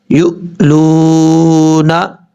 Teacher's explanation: لام واو پیش لو، نون زبرنا، یو لونا، لام کے بعد جو واو ہے یہ واو مدہ ہے، ایک الف کی مقدار، اس کو لمبا کر کے پڑھیں گے